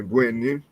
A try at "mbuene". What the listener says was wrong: your nasal, just for first, your nasal on your first. You drop the nasal from the second. Please, Mbuene. Mbuene. Mbuene.